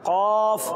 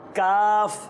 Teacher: قاف بھی اسی حروف مستعلیہ میں تھوڑا موٹا. قاف کاف، جو ڈنڈی والا کاف ہے وہ پتلا ہے